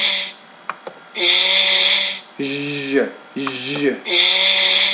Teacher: And you can watch the lady actually do the sound. It says the tip and blade of the tongue is elevated into contact with the sides of the palate and teeth, leaving a flattened midline groove along the upper surface of the tongue